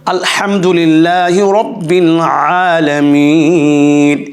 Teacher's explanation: এক আলিফ টান হবে এবং গলার ভিতর থেকে, গলার মাঝখান থেকে হবে আইনের উচ্চারণ